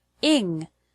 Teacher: the word English has the stress on the first syllable in.